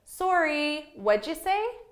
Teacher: so i have two rising intonations with sorry and say